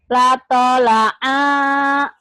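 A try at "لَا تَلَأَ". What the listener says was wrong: Kurang tinggi ujungnya. Ada apa-apa, are, gitu ujungnya. La tola'a.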